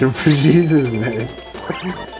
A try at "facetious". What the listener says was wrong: It starts with an F. Facetious.